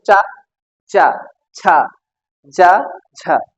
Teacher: स्पर्श करने के साथ साथ आप संघर्ष भी कर रहे हैं · स्पर्श के करने के साथ साथ आप संघर्ष भी कर रहे हैं। चा को आराम से बोल के देखो, चा नहीं बोल सकते आप, जोर से बोल रहे थोड़ा तो आपको हवा बाहर निकलेगी। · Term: स्पर्श संघर्षी व्यंजन